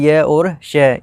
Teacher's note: फिर चू का च वर्ग यानी कि च छ ज झ ई, यशा नाम यानी कि य और श, इनका उच्चारण स्थान क्या है, तालु है, इसलिए इनको तालव्य वर्ण कहा जाता है